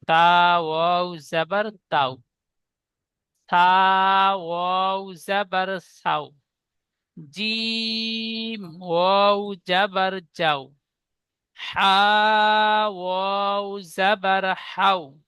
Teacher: তা অক্ষরটি এক আলিফ টান দিয়ে পড়েছি, ওয়াও যুক্ত করবার পরে আর টান দিচ্ছি না। তা ওয়াও জাবার তাও, তাও বলে টান হবে না, ভুল হবে। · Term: নরম আওয়াজে